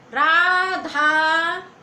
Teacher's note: रा के बाद में रा को हमने खींचा, धा को हमने खींचा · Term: प्लुत स्वर